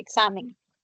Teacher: puede representar a dos sonidos que aparecen juntos. ¿A cuáles me refiero? A la oclusiva velar sorda y a la fricativa alveolar sorda.